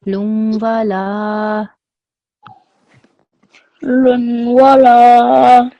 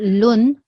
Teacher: that n sound becomes silent, okay? It becomes a nasal sound.